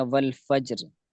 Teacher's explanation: را پر کسرہ ہے، زیر ہے، تو اس کو باریک پڑھا جائے گا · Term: را باریک